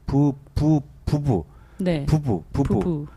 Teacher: 뒷소리가 좀 약해지나요? 뒤에서 나오는 그 비읍이 울림소리 사이에 나오는 안 울림소리거든요